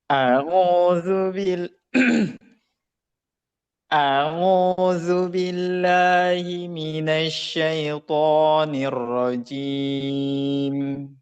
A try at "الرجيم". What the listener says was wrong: Nah, jim. Nah, itu enggak masuk hidung. Jim. Jim. Sambil ditutup hidungnya. Jim.